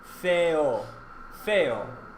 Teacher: The sound of the Spanish vowel E or E is similar to the long A sound as in the word make. But again, it stops before that Y in make.